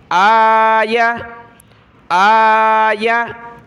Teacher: حمزہ کو ہم نے کھینچنا ہے ایک الف کی مقدار، کیونکہ اس کے اوپر کھڑا زبر ہے۔ یا کو ہم نے نہیں کھینچنا، ٹھیک ہے۔